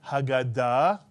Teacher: If you said Haggadah, with the accent on the last syllable, Haggadah, you are correct.